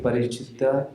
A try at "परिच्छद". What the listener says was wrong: परिच्छिद नहीं, परिच्छद।